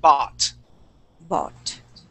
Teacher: instead of saying bau and pronouncing that U, we would say okay, ba, just an ah sound